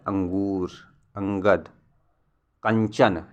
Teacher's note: इसमें ध्वनि नाक से निकलती है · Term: अनुस्वार